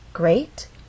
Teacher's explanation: great has one syllable so we only have one syllable to make our voice glide up · we're using rising intonation because this question requires a yes or no answer.